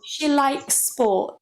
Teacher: we can join those two S's, so the one at the end of likes and the one at the end of sports. It becomes almost like one sound.